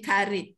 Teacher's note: Oh, Dia tak sebut qarib, dia karib. Itu yang kita mengaji tu tak betul je. Qa jadi ka.